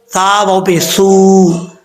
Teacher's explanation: जुबान की नोक ऊपर वाले दांतों के निचले हिस्से से लगे तो सा पढ़ा जाता है बगैर सीटी के